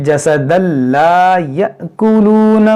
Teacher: یہاں تنوین کے بعد لام ہے، یہاں پر ادغام ہوگا